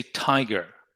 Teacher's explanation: And there is a breath coming out from the lungs through the mouth, and there is a buildup of breath, of air pressure, where your tongue is by the alveolar ridge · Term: unvoiced plosive consonant